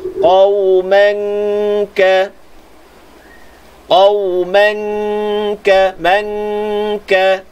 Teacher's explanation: Tutup makhraj kaf. Tunggu di makhraj kaf, panjangkan dengung kat situ. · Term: ikhfa hakiki